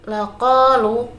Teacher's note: qa itu bacaan mad tabi'i sebab fathah diikuti dengan alif yang panjangnya satu alif atau dua harokat